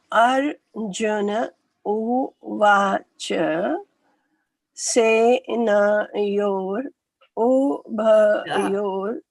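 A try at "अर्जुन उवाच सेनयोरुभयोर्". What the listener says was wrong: The U there is a soft U. So not U, not uvāca, not ubhayor. It'll be uvāca. Ubhayor.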